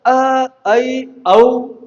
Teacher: ऐसे स्वर वर्ण जिनका उच्चारण करने में हमारा श्रीमुख विवृत की अपेक्षा थोड़ा कम खुले, उसे हम अर्ध विवृत स्वर कहते हैं।